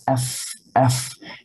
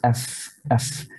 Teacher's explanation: Akan keluar dari perut bibir bawah sama ujung gigi seri atas. Af, af. Dari situ saja. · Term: al-hams